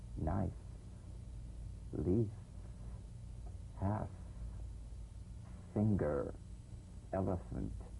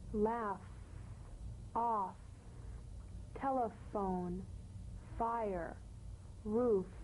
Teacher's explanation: The F is a cognate to the V, the unvoiced fricative labiodental. Upper teeth to lower lip, just like the V.